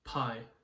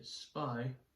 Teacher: You can feel your breath and you say pie and the breath hits your hand. When you say spy, there's not as much breath hitting your hand.